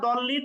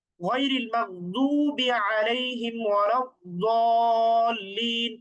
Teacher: আচ্ছা, সুতরাং দোয়াদের মাখরাজ হচ্ছে জিহ্বার গোড়ার কিনারা, উভয় পাশের কিনারা উভয় দাঁতের মাড়ির সাথে লাগিয়ে দোয়াদের উচ্চারণ করতে হবে, জ এবং দ এর মাঝামাঝি